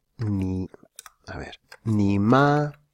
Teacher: El tercer tono pasa a ser un tono tercero bajo.